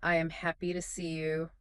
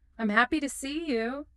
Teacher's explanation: You stressed happy and see.